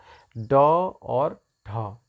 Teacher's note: मूर्धन्य व्यंजन वे व्यंजन होते हैं जिनको बोलने में हमारी जीभ जो है हमारे तालू के अगले भाग पर लगती है, जाके चिपकती है